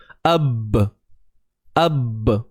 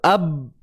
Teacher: Bila kita tutup mulut, ab. Sebabkan pegangan makhraj yang sangat kuat, maka keluar satu sifat iaitu lantunan.